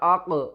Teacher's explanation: قاف کے اوپر قلقلہ کریں گے، حروف قلقلہ میں سے ہے